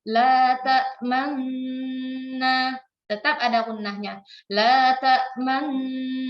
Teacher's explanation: kita idghamkan dengan dengung ke nun kedua sambil kita majukan bibir kita monyongkan bibir kita untuk kita menunjukkan bahwa di situ ada dhammah yang sudah hilang. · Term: idgham bi gunnah